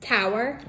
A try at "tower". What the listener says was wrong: There's no R. It's tower.